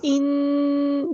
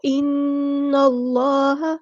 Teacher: اگر ناک کو بند کر دیں تو یہ آواز پیدا نہیں ہوتی بلکہ بند ہو جاتی ہے کیونکہ یہ آواز ناک سے نکلتی ہے · کا ایک ہی مخرج ہے جہاں سے غنہ ادا ہوتا ہے، یہ آواز صرف ناک سے نکلتی ہے اور اس میں زبان کا کوئی عمل دخل نہیں ہوتا